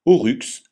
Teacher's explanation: y se prononce u comme dans bu jamais i comme dans mystère